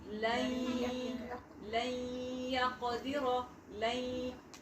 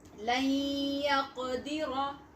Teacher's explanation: We are merging with nasal sound, with the gunna.